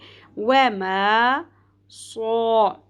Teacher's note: سیٹی کے ساتھ صاد کو پر کرتے ہوئے ادا کرنا ہے ، الف حرف مدہ ہے، ایک الف کے برابر کھینچیں گے،